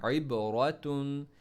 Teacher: आइन में middle throat से पढ़ना है